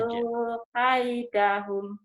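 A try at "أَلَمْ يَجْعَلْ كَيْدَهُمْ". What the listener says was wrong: Jangan yaj'alu. Itu kan lam mati. Alam yaj'al.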